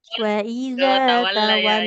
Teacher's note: Di tawalla lamnya jangan tebal, Ibu. Jangan tawall. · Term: lamnya tipis